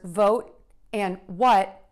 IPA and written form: voʊt wʌt (VOTE & WHAT)